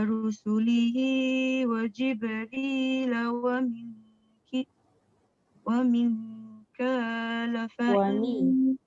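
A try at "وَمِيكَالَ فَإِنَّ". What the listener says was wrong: Wa mikala fa'in. Jangan terlebih. Ka tu terlebih. Wa mikala fa'in. Cukup, jangan wa mikala fa'in. Terlebih tu. Dia jadi 3. Wa mikala fa'in.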